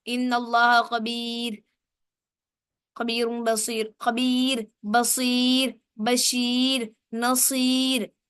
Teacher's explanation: را سے پہلے اگر یا ہوگی تب بھی را باریک پڑھا جائے گا